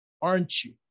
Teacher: El you va a ser con entonación descendente.